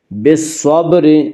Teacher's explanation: یہاں صاد حروف شمسی میں سے ہے اور صاد سے پہلے الف اور لام ہے، اس لیے الف اور لام کو نہ پڑھیں گے بلکہ بعد والے حرف سے ملا کر پڑھیں گے۔ بالصبر، صاد کو پر پڑھیں گے، صاد حروف مستعلیہ میں سے ہے، حروف مستعلیہ 7 ہیں جن کا مجموعہ خص ضغط قز ہے، یعنی خا صاد ضاد غین طا قاف ظا، یہ 7 حروف ہمیشہ ہر حال میں پر پڑے جاتے ہیں۔